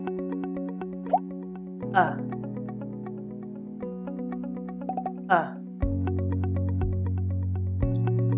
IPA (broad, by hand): ʌ